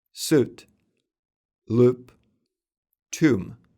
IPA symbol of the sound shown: u